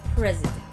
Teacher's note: S is becoming a Z if it's in between two vowels